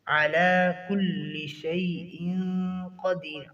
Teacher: علی پر کھڑی زبر ہے تو اس کھڑی زبر کی ایک الف کے برابر ادائیگی ہوگی